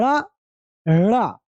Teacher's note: आती क्या नहीं झटके, पहले जीभ आपके तालू को टच करेगी और झटके से नीचे आएगी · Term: उक्षिप्त व्यंजन